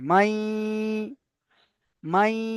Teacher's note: নুন সাকিনের পরে ইয়া এসেছে, তাই একালিপ পরিমাণ গুণনা করে মিলিয়ে পড়তে হবে